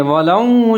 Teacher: وَلَوْ شَاءَ اللَّهُ، واو کے اوپر زبر ہے، لام کے اوپر زبر ہے، آگے واو لین ہے، واو ساکن ہے، تو لام کو واو کے ساتھ ملائیں گے اور ہونٹ کو گول کریں گے